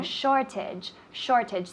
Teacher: the emphasis of the word is in the first syllable